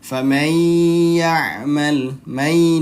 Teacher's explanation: saat idgham atau saat melebur dia ditahan dua ketukan. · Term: idgham gunnah